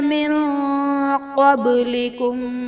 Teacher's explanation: من قبلکم میں نون ساکن کے بعد حروف اخفا میں سے قاف ہے تو یہاں پر اخفا کا قاعدہ ہوگا، یعنی نون ساکن میں ہم غنہ کر کے پڑھیں گے